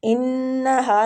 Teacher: انہا نون مشدد پہ غنہ ، ہا الف مد کے ساتھ ہے، ہا کو کھینچیں گے،